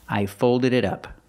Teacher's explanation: The T in it sounds like a fast D.